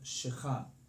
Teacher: the emphasis should be on the last syllable